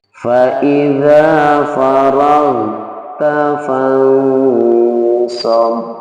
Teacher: Ya, jadi kalau di sini adalah nun mati bertemu dengan shad, maka ketika mendengungkan fansab, shadnya siap untuk keluar. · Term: ikhfa